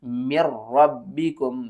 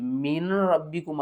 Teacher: اور اس کے بعد ہم نے نون کو یہاں پر نہیں پڑھنا، ہم نے را کو پڑھنا ہے